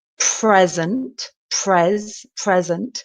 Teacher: exactly the same pronunciation present with the stress at the beginning of the word the first syllable